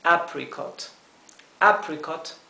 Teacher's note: apricot apricot apricot la dificultad nuevamente radica en la letra r hay que pronunciar la r como se pronuncia en inglés con la lengua detrás del paladar